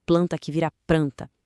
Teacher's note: Tem o rotacismo, que é quando a gente troca o L pelo R